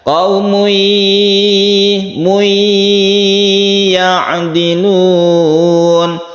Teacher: Idgham artinya masuk ke huruf berikutnya, tanwinnya masuk ke ya sehingga membentuk tasydid ya dan dipanjangkan. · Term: idgham bi gunnah